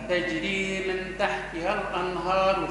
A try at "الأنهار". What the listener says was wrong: مش الأنهار، الأنهار، ها رقة،